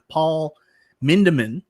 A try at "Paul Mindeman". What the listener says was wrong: Leave the R off and you're fine.